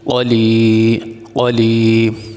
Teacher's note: آگے لام کے نیچے زیر ہے، اس کے بعد ہے یا ساکن، یا ساکن سے پہلے زیر آ جائے تو یہ حروف مدہ کہلاتا ہے، اس لیے اس کو لمبا کریں گے